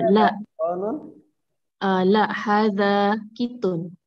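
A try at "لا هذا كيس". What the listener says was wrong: La, la-nya panjang ya. La. hadha kitun.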